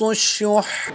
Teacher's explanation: حا کی زبر کو وقف میں ساکن کر دیں گے اور تشدید کو ہم یہاں پر باقی رکھیں گے